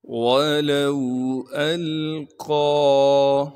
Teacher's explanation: حمزہ کو آگے لام ساکن سے ملائیں گے کیونکہ لام ساکن ہے۔ قاف کو موٹا کر کے پڑھیں گے کیونکہ قاف موٹے حروف میں سے ہے۔ قاف کے بعد الف اوپر کڑا زبر ہونے کی وجہ سے قاف کو ایک الف کے مقدار کھینچیں گے، اس یا کو ہم نہیں پڑھیں گے۔